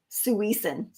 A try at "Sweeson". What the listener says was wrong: So she says all syllables are equally accented. Don't emphasize the second syllable. Sweeson.